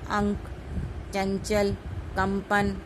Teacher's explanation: इसके उच्चारण में नाक से अधिक वायु निकलती है। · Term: अनुस्वार